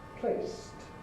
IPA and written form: pleɪst (placed)